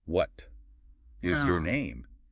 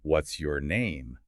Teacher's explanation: Point out how is and your shrink and blend, often using that sound.